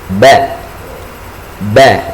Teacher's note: ketika kita melafalkan huruf ba tidak boleh ada udara keluar